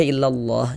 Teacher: huruf lam jalalahnya dibaca tebal, dibaca tabkhim seperti itu